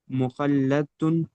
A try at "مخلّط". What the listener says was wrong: زبر نہیں زیر. جی تشدید کے اوپر اگر رہے تو زبر ہوتا ہے ٹھیک ہے اور تشدید کے نیچے رہے تو زیر ہوتا ہے.